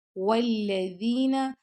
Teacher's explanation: ذال کو آپ نے نرمی سے پڑھنا ہے، اور والذین نون کو لمبا نہیں کرنا